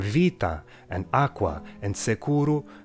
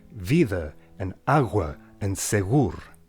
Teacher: Soften ptk to bdg